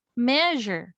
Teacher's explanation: the stress is on the first syllable